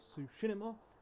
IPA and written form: ˈtsuʃiˌmɑː (Tsushima)